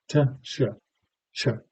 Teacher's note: When I say a chew or something like that, that ch is two things, right? I'm doing a plosive, sometimes called a stop, right? T, and I'm doing a sh